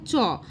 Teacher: যেমন যেমন চ, দেখো চ যখন আমি উচ্চারণ করছি জীবের সামনের অংশটা আমার তালুতে স্পর্শ করছে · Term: তালব্য বর্ণ